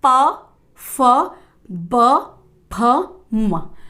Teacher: हमारे ओष्ठ का, यानी कि होठ का काम इस वाले वर्ग को बोलने में हो रहा है